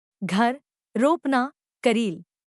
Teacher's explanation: हिंदी में र ध्वनि सघोष अल्पप्राण वर्स्य लुंठित होती है